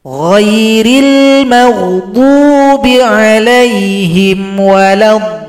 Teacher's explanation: Dot ini bendera berjumpa tasydid, ini mad lazim mutsaqqal kalimi. Nah, ini panjang 6 ketukan baru tasydid.